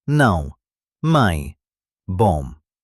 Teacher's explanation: Now let's talk about something unique, nasal sounds. Portuguese uses nasal vowels, sounds that resonate through your nose. · Words like não, mãe, bom. These don't end with a strong consonant. Instead, the sound flows into the nose. To practice this, try humming slightly while saying the vowel.